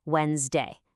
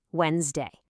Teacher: Now, here's the trick to this word. We completely ignore that D and that middle E when we say it. It's just two syllables, Wednesday.